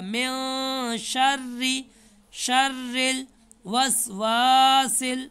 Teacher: تو من کا نون چھپائیں گے، شین آ رہا ہے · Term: نون چھپتا ہے